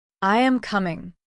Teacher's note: Your voice falls at the end. That falling tone signals a statement.